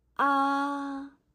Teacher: First tone is a flat tone, also a longest sound.